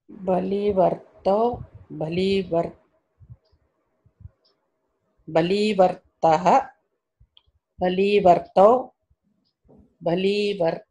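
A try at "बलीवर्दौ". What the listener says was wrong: Good. Right? It's not difficult. Simple.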